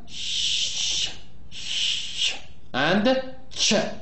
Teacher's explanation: sh, sh, and ch, which are voiceless. There is no vibration. Just to remind you that voiceless means there is no vibration here.